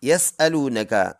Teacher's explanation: واو مدہ ہے، ایک الف کی مقدار، اس کو لمبا کر کے پڑھیں · یسألونک، یا اور سین کو ملائیں گے، سین سیٹی والا ورڈ ہے، آواز ایسے نکلے گی جیسے کوئی سیٹی بجا رہا ہے